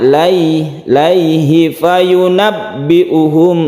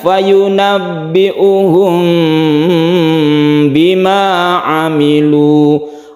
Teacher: Ikhfa syafawi itu kita panjangkan. Ketika kita membaca mim kita bersiap membaca ba. dan kita dengungkan atau kita panjangkan.